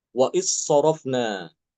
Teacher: Hilang benar-benar hilang masuk ke dalam huruf shad